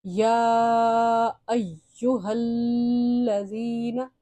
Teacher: ان دونوں جگہ پہ تشدید ہے اس لیے ان دونوں کو ہم نے جماؤ دے کے رک کے پڑھنا ہے.